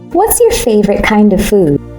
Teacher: In food, stretch the oo sound like moon to make it clear.